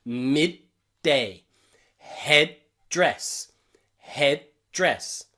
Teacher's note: we stop our throat it's known as a glottal sound in english a glottal stop